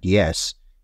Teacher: When we use our tongue near the hard palate to make a sound, that sound is called, for instance, the yeah sound in the word yes is a palatal sound.